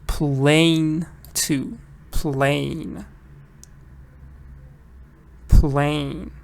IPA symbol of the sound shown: eɪ